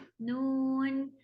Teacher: نون میں نون ہے بیچ میں واو جو ہے وہ کلیئر ہوتا ہے، نون ناک میں نہیں ہوتی آواز